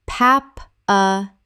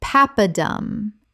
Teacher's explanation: 3 syllables with the stress on the first.